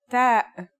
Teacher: As you can see, the only difference is in the position and the number of the dots. The pronunciation is like the English t except you should release your breath with a strong burst of air.